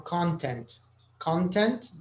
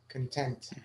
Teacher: the stress is on Con on the first syllable but content when you're happy about something or you're satisfied uh you you stress the second syllable